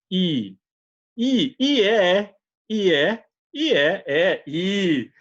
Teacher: I, você tem mais tensão. I, os seus lábios se estiram.